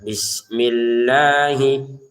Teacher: Lafal Allahnya kita panjangkan dua harakat.